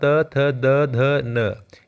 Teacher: द ध न यह दांत इनको टच करता है है ना जीभ दांत को टच करती है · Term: दांत व्यंजन